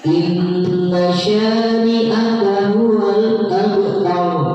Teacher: ghunna karena nun bertasydid. Cara membacanya adalah dengan berdengung